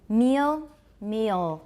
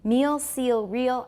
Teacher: I hear a little schwa I just consider it a kind of diphthong because of the L